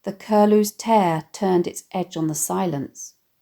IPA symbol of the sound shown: t